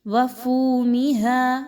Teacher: وفومہا، فا واو پیش فو، واو مدہ ہے، 1 سے 2 الف کے برابر پڑھیے